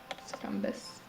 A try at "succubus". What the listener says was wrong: It's not succumbus, there's no M.